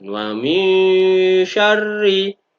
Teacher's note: nun sukunnya dibaca secara samar-samar dengan sedikit dengung dan ditahan. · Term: ikhfa